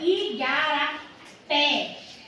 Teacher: é pronunciada como mais intensidade quando nós falamos aqui ó Igarapé a última sílaba é uma sílaba mais forte do que as outras · a última sílaba é uma sílaba mais forte do que as outras. Quando isso acontece, essa palavra ela é chamada de oxítona.